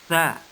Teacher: bunyi huruf keluar dari ujung lidah dan menepati ujung 2 gigi seri, ya, menepati ujung 2 gigi seri yang berada di atas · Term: huruf sa